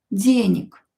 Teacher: So G, if it's located at the end of the word, will be pronounced as K.